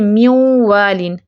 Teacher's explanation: ادغام ناقص بالغنہ میں دیکھیں کہ اس میں نون ساکن کی اپنی بھی آواز یا اپنی پہچان ادھوری سی باقی رہتی ہے